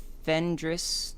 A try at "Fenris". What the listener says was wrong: Fenris. There's no D.